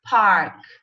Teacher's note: There is no air coming out of my mouth. If I say park, I have to blow the air outside of my mouth and it's light. There is no voice coming out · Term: Voiceless